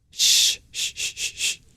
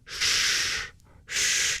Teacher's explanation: And an S with a dot below it is similar, except instead of arching our tongue up to the palate, we pull our tongue back and retroflex. It sounds a little darker.